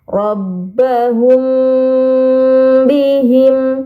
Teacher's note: Maka mim sukunnya harus disamarkan dengan gunnah yang dipanjangkan. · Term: ikhfa syafawi